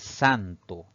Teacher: la mayor fuerza de voz recae en la penúltima sílaba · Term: palabra grave